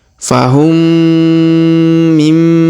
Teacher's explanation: maka huruf mim sukunnya melebur masuk ke huruf mim bertasdid. Kita tahan dan kita dengungkan 2-3 harokat.